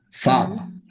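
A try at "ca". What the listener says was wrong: Not sa, cha, cha. When you say cheat, or not cheat, or chase, choose. When you use cha.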